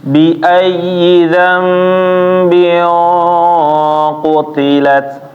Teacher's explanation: Nun mati ketemu ba berubah menjadi mim. Cara bacanya i ditahan ya Bapak-bapak. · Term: Iqlab